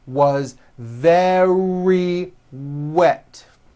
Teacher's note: very starts with a V sound followed by a strong R